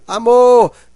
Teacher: o mor é a sílaba mais forte. Então, a sílaba mais forte, aquela que é pronunciada com maior intensidade, nós chamamos de sílaba tônica.